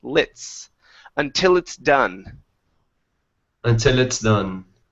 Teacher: cut off the L and connect it to the word it's.